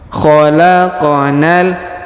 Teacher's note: huruf q juga berharakat sukun maka dipantulkan